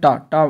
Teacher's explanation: टा जो होता है टा होता है मूर्धन्य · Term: मूर्धन्य वर्ण